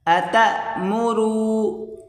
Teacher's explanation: اتا جھٹکا دے کر یہاں پڑھیں گے